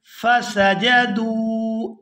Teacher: یہاں دال کو واو ساکن کے ساتھ ملائیں گے تو کھینچ کر ادا کریں گے کیونکہ یہ واو مدہ ہے۔ واو ساکن ہو اور اس سے پہلے پیش ہو تو وہ واو مدہ ہوتی ہے۔